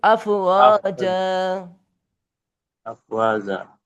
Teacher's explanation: আফওয়াজা, এখানে এক জবর বাদ দেবো। ওয়াকফ করার সময় দু জবর বাদ দিতে এক জবর বাদ দিয়ে এক জবরে এক আলিফ পরিমাণ টেনে পরে বাদ দেবো একটা জবর। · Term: মাদ্দে ইওয়াজ